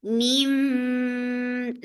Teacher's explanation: So keep the sound in your nose for a longer time. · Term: iqlab